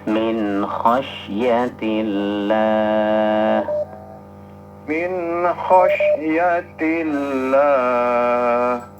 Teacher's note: Khas huruf sya sifatnya tafasyi. Menyebarnya angin di rongga mulut dan rongga tenggorokan.